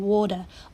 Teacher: O makes the long aw sound as in water